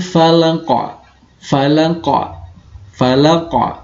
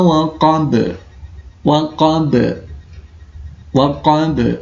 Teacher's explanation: karena dia di belakang, maka dia kena jenis qalqalah kubra. Maka pantulannya kuat.